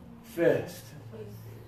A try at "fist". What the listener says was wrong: You're still putting your tongue high. Low tongue. Breathe out, fist. This is high tongue, feast. And low tongue, fist.